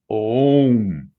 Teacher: Então, quando nós pronunciamos, se a pronúncia for feita isoladamente, devagar, nós pronunciamos Om, como se fosse dizer dois Os, mas muito discretamente fundidos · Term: som nasalizado